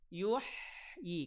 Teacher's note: H sukun alirkan alirkan suara alirkan nafas